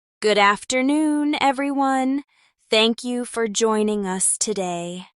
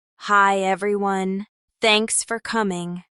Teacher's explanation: The first is slower with clearer enunciation. The second is quicker and more relaxed.